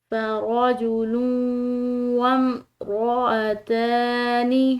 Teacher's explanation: اب یہاں پر دونوں جگہ زبر ہے لیکن ان کی پوزیشنز میں فرق ہے، ایک بڑی زبر ہے دوسری کھڑی زبر ہے، تو جو بڑی زبر ہے اس کو ہم نے کھنچاؤ نہیں دینا، اس کے بنسبت جو ہے یہ کھڑی زبر اس کو ہم نے کھنچاؤ دینا ہے، ایک الف کے برابر اس کو لمبا ادا کرنا ہے